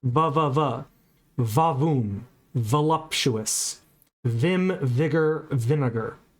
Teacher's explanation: Dental from the Latin for teeth. You'll notice that the V sound in English is also labod dental. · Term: labiodental